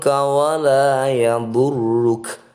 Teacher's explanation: Kemudian bertemu dengan kaf yang berharokat fathah dan dibaca wakof. Karena ro-nya bukan matobi'i atau tidak panjang, maka ketika wakof juga dibaca pendek atau tidak perlu panjang.